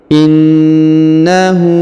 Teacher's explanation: Inu perhatikan huruf ditahan dan ditekan karena berharakat tasdid innahu kemudian huruf hu dipanjangkan dua harakat karena berharakat u terbalik · huruf na ditahan dan ditekan karena berharokat tasdid.